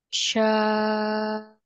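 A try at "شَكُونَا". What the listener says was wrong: Nah, satu ketukan lagi, Ibu.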